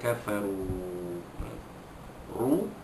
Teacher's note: ro baris depan, ro tafkhim dibaca tebal, ru dua harkat, ro dapat ru dua harkat, man asli dua harkat panjangnya.